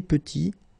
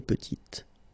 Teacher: Final T is not pronounced, and then when you add this E at the end, you get the sound T, petite. Okay, il est petit, elle est petite.